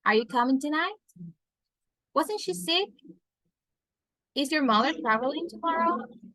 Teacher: if we're asking yes, no questions, we are going to use a rising tone.